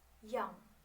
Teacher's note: Y, produced with tongue touching in the roof of the mouth, in palatal area.